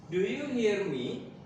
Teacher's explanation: From the video we learned that if a sentence or a question is short answer, jawabannya pendek, maka di akhir kalimat intonasinya naik, ya. Jangan lupa intonasinya naik, menunjukkan bahwa nanti jawabannya itu cuman yes atau no. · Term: Rising intonation, rising intonation